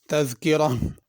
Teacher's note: और तज़किरा अगर वक्फ़ करेंगे तो तज़किरा हा के साथ पढ़ेंगे। तज़किरा में ज़ाल का भी ख्याल करना है, ज़ा ना अदा की जाए।